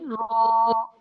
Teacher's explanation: জিহ্বার আগার পিঠ উপরে তালুর সাথে লাগিয়ে উচ্চারিত হয় র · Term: রয়ের মাখরাজটা